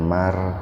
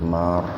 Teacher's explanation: ro sukun didahului fathah, jadi ro-nya dibaca tabkhim. Tabkhim itu tebal, jadi jangan mar tapi mar.